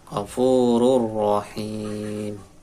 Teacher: ini tanwin ketemu ro itu kau bilang guna, langsung ro tanpa dengung, ro nya tebal.